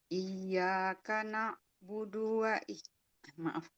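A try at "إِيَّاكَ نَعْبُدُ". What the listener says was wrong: Ainnya kurang. Jangan jangan budu. Iyyaka na'budu. Coba.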